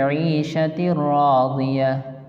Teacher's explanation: یہاں فی عیشۃ راضیہ 2 زیر کے بعد تا کے بعد 2 زیر کی تنوین کے بعد حروف یرملون کے 6 حرفوں میں سے را آ رہی ہے نا، تو را جب آئے گی حروف یرملون میں سے تو یہاں ادغام یرملون ہوگا. ادغام یرملون بلا غنہ، یہاں غنہ کے ساتھ نہیں پڑھیں گے.